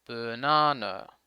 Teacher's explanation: The word banana is a good example of the schwa. The first and last syllables have the schwa.